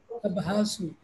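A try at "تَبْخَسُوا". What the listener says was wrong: তাবহানা, হানা, খ, খ বলবেন, বলুন তো তাবখাসু, এই যে এখানে পড়ে আসেন তাবখাসু, একই, কম দিও না।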